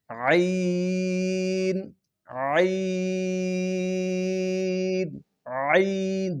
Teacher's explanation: حلق کے درمیان والے حصے سے عین ادا ہوگا